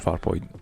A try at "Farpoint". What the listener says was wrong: Why do you say it like that? Farpoint. It's Farpoint, not Farpoint. Not like far, comma, point. It's Farpoint. It's not Farpoint. No, it doesn't. It sounds different. It sounds different.